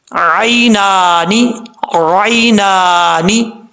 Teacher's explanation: نون کے اوپر کھڑا زبر ہے، ایک الف کی مقدار اس کو لمبا کریں گے